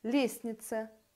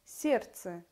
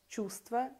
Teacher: лестница произносятся без т сердце без д чувства без в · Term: пропуск одного согласного звука